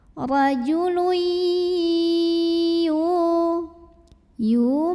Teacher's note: ya yang berbaris dhammah kita panjangkan 2 harokat saja. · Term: mad-tabi'i